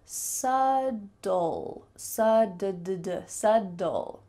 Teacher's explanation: First of all, let's take that B and cut it out, throw it away completely. The B is completely silent.